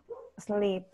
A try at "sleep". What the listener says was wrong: Sleep. Un poco más marcada la I. Sleep.